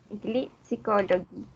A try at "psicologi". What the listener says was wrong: La O pasa a ser una I, entonces cambia el sonido de go a G. G psychology.